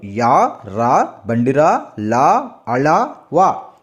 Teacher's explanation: నాసిక అంటే అర్థం కూడా అదే కదా నాసిక అనేది అనునాసికాలు తర్వాత అంతస్థాలు అంతస్థాలు అంటే అంగిలి సాయంతో పలికే అక్షరాలని